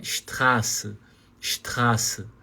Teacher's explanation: pode até abrir a boca um pouco mais na letra A porque é um a chamado de longo longo no sentido de da pronúncia você vai prolongar um pouquinho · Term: vogal longa